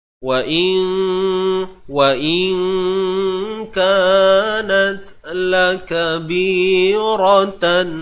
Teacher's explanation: Nat huruf ta mati ni pastikan ada sifat hams lah. Sifat hams, nafas yang terlepas, udara yang terlepas.